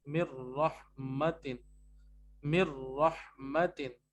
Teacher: अब आपने मिलाना पड़ेगा इसको, लेकिन जब आप मिलाएंगे तो आप गुन्ना नहीं करेंगे, हालांकि यहाँ पे इदगाम हो रहा है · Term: नो गुन्ना